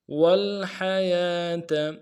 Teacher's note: موت خلق الموت والحیات واو کو لام کے ساتھ ملانا ہے، لام میں غنہ نہیں ہوگا، حا کو گہرائی سے ادا کریں گے، یا کے اوپر کھڑا زبر ہے، ایک الف دال میں کھینچیں گے، تا کو نرم سے ادا کریں گے.